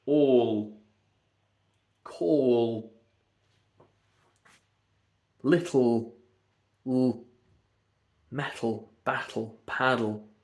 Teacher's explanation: It's a lateral releasing sound. And people talk about the dark L, which is mainly on the end of a word.